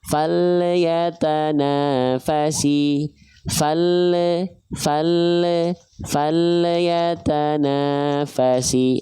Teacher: Contoh lam sukun yang memantul adalah terdapat bunyi vokal e pada lam sukunnya.